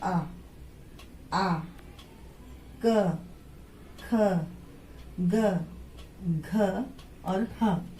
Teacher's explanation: अब उच्चारण स्थान में जैसे कंठ है, गले से हमारी आवाज निकलती है, तो आता है आ, क, ख, ग, घ और ह। ये सारे वर्ण जो हैं वो गले से बोलने वाले हैं, गले से आवाज निकलती है